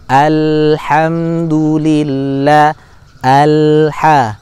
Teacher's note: Ya. Maka bunyikan lam sakinah secara sempurna, yaitu mengalir separuh.